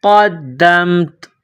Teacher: جب وقف کریں گے، سٹاپ کریں گے تو آخر والے حرف تا کو سائلنٹ کریں گے